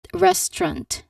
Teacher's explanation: it really blends some of those sounds together into just two syllables. They squished they kind of squished some parts of the word.